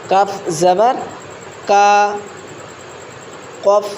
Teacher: জবর ক ভিতর থেকে একবারে ললির মাঝি থেকে বেরিয়ে আসবে অক্ষরটা কফ জবর ভিতরের মাংস থেকে বেরিয়ে আসবে অক্ষরটা